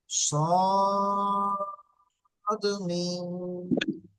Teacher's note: তো দেখেন এই মিম, এটাকে বলা হচ্ছে মিম, এটা হচ্ছে সদ। প্রথমে সদটাকে 3 আলিফ পরিমাণ টান দিতে হবে এবং মিমটাকেও 3 আলিফ পরিমাণ টান দিতে হবে।